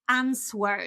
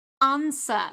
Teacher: So there is no w in the middle.